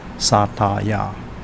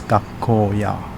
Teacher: Gakko, which means school, followed by a ya, remains unchanged as gakko-ya. So, in the case where a word ends with a long vowel sound, there is no topic particle sound change.